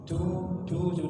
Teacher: Yang penting ditempelkan ujung lidahnya dengan pangkal gigi atas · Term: huruf dal